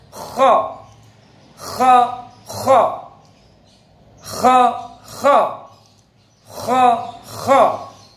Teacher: kha punya sifat kuat, berat diucapkan, dan isti'la lidah naik. Yang menjadi kha ini huruf tafkhim, huruf tebal.